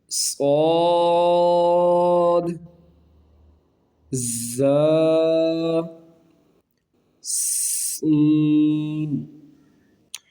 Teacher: صفیریہ کا مطلب سیٹی والے حروف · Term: حروف صفیریہ